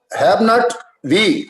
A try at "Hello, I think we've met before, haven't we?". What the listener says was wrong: Have not नहीं, उसको pronounce करेंगे haven't we. Haven't. Contracted form है वो, उसको इस तरह से पढ़ेंगे आप. Haven't we? Yes, not have not.